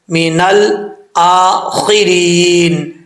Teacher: را کے نیچے زیر ہے، را بریک پڑھی جائے گی